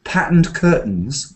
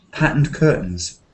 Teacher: So sometimes we don't say t. It just softens up like patterned curtains. It's kind of glottal, it says. Do you know glottal?